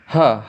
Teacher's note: ह का उच्चारण होता है कंठ से